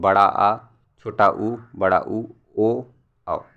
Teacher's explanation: पश्च स्वर में जिन स्वरों का उच्चारण जीभ के पिछले भाग से होता है उसे हम पश्च स्वर कहते हैं